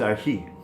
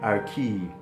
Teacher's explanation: we hear it as a hard H in some pronunciations and we can also hear it even like a K sound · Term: Chi